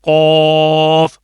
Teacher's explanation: जो गले की तरफ जो तालू का हिस्सा होता है वह नरम होता है वहां पर आपने जुबान का बिल्कुल जो एंड है वो लगाना है · جو زبان کا بالکل آخر والا حصہ ہے، اوپر والے تالو جو نرم تالو کا جو حصہ ہے، ایک تو درمیان میں سخت ہوتا ہے، تو اینڈ میں جو گلے کی طرف جو تالو کا حصہ ہوتا ہے وہ نرم ہوتا ہے، وہاں پر آپ نے زبان کا بالکل جو اینڈ ہے وہ لگانا ہے، پھر یہ لفظ ادا ہوگا قوف.